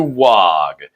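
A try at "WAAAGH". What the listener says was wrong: Did you just pronounce the G in WA? I think everybody pronounces it without the G. It's WA. You're some kind of noob if you say WOG.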